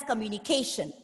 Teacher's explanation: the word communication has five syllables and putting the stress on the penultimate syllable